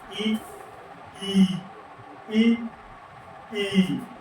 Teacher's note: उच्चारण करने में जीभ के आगे का भाग है उसका प्रयोग होता है तो उसे अग्र स्वर कहते है